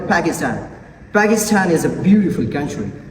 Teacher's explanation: So the Pakistan word begins with p sound, so it should be aspirated.